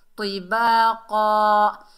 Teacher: تو وقف کی حالت میں ہم دو زبر میں سے ایک زبر پڑھیں گے، ایک زبر کو ختم کر دیں گے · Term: وقف بالابدال